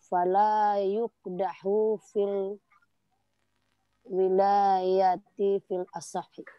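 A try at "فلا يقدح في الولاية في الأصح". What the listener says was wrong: Masyaallah pintarnya.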